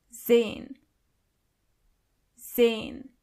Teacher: the letter S is not pronounced as S, but more like Z